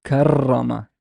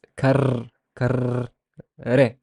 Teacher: the re, when it has a shadda, it becomes a trill. It becomes like your tongue has to basically do multiple flaps.